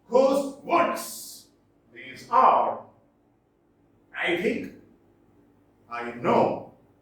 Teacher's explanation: Unstressed, stressed, unstressed, stressed, unstressed, stressed, unstressed, stressed.